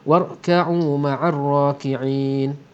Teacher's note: Ra sini pun tebal kerana berbaris atas, dan di hujungnya ada mad alif li sukun dua harakat ataupun empat harakat ataupun enam harakat.